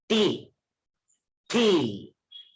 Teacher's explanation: It's an aspirated ta. It's not ta.